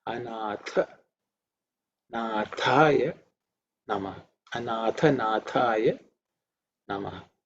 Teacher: You have to pay attention to the Tha, which is the second letter in the Tha Varga, so it has to be aspirated